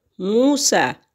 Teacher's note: سین کے اوپر کھڑی زبر ہے، ایک حرکت کے برابر اس کی کھینچنے کی مقدار ہے۔ واؤ ساکن ہے اور اس سے پہلے لفظ پر پیش ہے اور یہ واؤ مدہ ہے اور اس کے بھی کھینچنے کی مقدار ایک حرکت کے برابر ہے۔